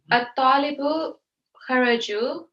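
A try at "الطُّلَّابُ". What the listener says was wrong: No, at-tullabu, not at-talibu, at-tullabu.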